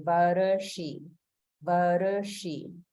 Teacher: in Varshiyase, we have Swara Bhakti because the Ra or Repa is combined with Sha, a sibilant or an S sound